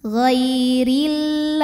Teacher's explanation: Huruf ro dibunyikan secara tarqiq karena berbaris di bawah. Jadi pangkal lidah kita datar saja.